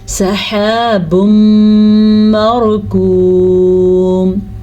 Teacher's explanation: را کو ہم پورا پڑھیں گے کیونکہ را ساکن سے پہلے زبر ہے